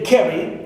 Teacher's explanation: ca is stressed, right? Pronounced with more energy, more force, and also more prominence.